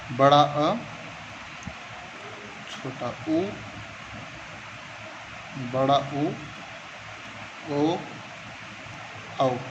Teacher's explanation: ये पश्च स्वर में आते हैं दोस्तों, जिनका जीभ का पिछला भाग काम करता है।